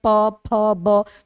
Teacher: जब उच्चारण करें प फ ब तो हमारा ओठ सट रहा है, यानी जब होठ सटेगा तभी प फ ब भ का उच्चारण होगा, अन्यथा नहीं हो सकता है। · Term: ओष्ठ